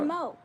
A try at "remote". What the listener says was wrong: Not a K. you're saying it with a K, and it doesn't have a. It ain't a remote. It's a remote. T is a T sound, not a K sound.